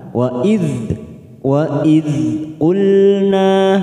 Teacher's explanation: hati-hati huruf dzal sukun jangan sampai dipantulkan karena bukan qalqalah, kita tahan. Wa idh ulna, nah fathah diikuti alif, dua harokat kita panjangkan.